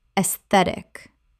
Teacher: aesthetic Three syllables. The AE makes an E sound and the stress falls on the second syllable.